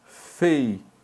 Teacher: Dá para ver a presença de um hiato aqui, em que o U é tônico, não é? Só que o tônico, ele está precedido, ele está antecedido de um ditongo, olha o ditongo EI aqui, olha.